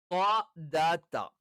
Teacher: ഈ പറയുന്ന മൂന്ന് അക്ഷരങ്ങൾ ഒരേ സ്ഥലത്ത് നിന്നാണ് ഉച്ചരിക്കുന്നത്. ഇതിൽ ത്വ മാത്രം ഉച്ചരിക്കുമ്പോൾ നാവിന്റെ മധ്യഭാഗം മുകളിലേക്ക് ഉയരും.